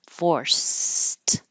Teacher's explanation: that's it the word forced by itself is an example of it looks like Ed but sounds like a t because the final sound in the word is voiceless